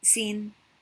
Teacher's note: the very high tone sin